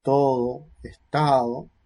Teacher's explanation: La aproximante, es decir, el movimiento se insinúa